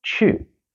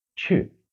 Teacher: the word for Go in Chinese is Chu fourth tone